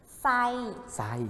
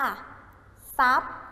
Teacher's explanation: พยัญชนะตัวหน้าเป็นตัวททหารนะครับควบกับตัวรอเรือจะออกเสียงเป็นสอ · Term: ทควบกับรอออกเสียงเป็นสอ